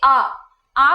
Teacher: आ बोलते हैं तो टंग नीचे है, ठीक है, बैक है, लोअर है, ओपन पोजीशन पे है।